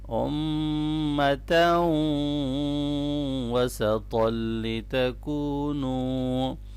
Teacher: جَعَلْنَاكُمْ امتاً، یہاں میم مشدد پہ غنہ ہوگا اور آگے ادغام مع الغنہ ہے تو ملائیں گے۔